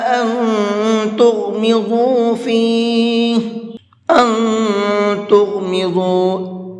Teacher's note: أَن تُغْمِضُوا، اس نون کے اندر بھی اخفا کریں گے